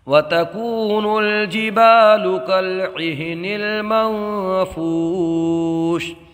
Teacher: यहाँ पर नून साकिन में इख्फा होगा, इसलिए कि नून साकिन के बाद हुरूफ इख्फा में से फ़ा आया है, तो यहाँ पर इख्फा होगा।